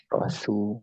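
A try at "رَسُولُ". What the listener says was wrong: Su. Terbawa huruf ro-nya tebal, mungkin langsung ke sin.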